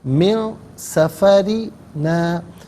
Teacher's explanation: لقد لقینا من سفرنا، نون ساکن ہے، اس کے بعد سین حرف اخفا ہے، تو نون ساکن کو اخفا کے ساتھ پڑھا جائے گا، ناک میں آواز لے جا کر گنگنانا اسے اخفا کہتے ہیں